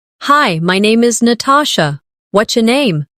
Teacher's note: Notice how what's your can sound like whatcha in casual speech.